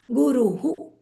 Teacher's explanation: It's U, so the scent of the U is going to rub off on the visarga.